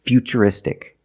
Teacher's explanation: T as CH and we see t r i in futuristic again the t is pronounced with the CH sound